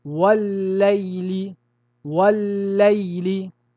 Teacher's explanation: Le premier lam a été fusionné dans le deuxième